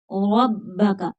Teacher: الف ہے، ربک، راپور پڑھیں گے، را کے اوپر زبر ہے، با مشدد ہے، سختی کے ساتھ پڑھی جائے گی